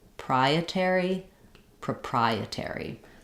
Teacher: we stress on the pry syllable we actually hear this o says the uh sound it's awah